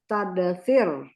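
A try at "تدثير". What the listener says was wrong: Oke, panjang ya, panjang. panjang. Yang tasdid itu harus dipanjangkan. Tadasirun. Harus panjang. Tadasirun.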